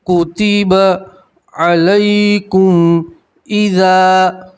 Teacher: یا لین ہے اس لیے آپ اس کو کھینچیں گے نہیں، یا لین کو جلدی سے اور نرمی سے پڑھتے ہیں